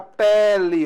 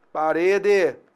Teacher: É aberto, ó. Então nós temos aqui o timbre aberto, é o e o timbre fechado, e o.